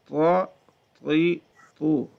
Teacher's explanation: اس کو موٹا کریں گے, طا ہے نا, طا ہونٹ بھی گول نہیں کریں گے.